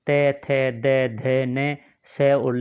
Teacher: दंत्य में दांतों के मूल से त, थ, द, ध, न, स और ल आता है